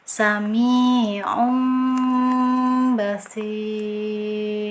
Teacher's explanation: bibirnya tidak merapat sempurna ya, jadi ada celah